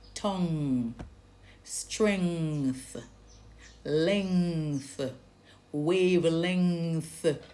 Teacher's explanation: So when you say tongue, the back of your tongue is lifted to touch the roof of your mouth towards the back going towards the throat there, the soft pallet. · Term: ng word